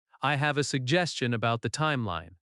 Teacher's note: Stress suggestion on the second syllable.